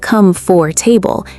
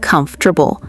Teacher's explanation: It's not come for table, it's more like comfortable. Three syllables, not four.